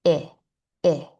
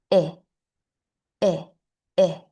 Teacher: It's a push of air from the back. There is a vibration from the throat. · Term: short I